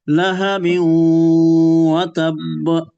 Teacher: নাকে আপনি তানবিন এবং ওয়াওয়ের সাথে যখন আপনি ইদগাম করবেন তো ওটাকে নাকে গুন্নার সহ পড়বেন